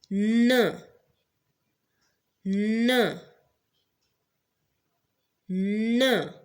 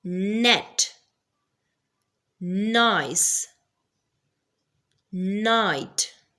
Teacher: Next nasal sound is n, n, n, which is also a voice sound. Why? Because it is produced by the vibration of the vocal cords.